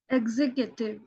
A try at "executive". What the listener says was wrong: But we will not say Q. We'll say executive. But not cutive. Executive.